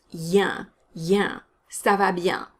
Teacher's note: Bien has a nasal vowel in it, so you don't want to pronounce that N. The sound is yen, yen.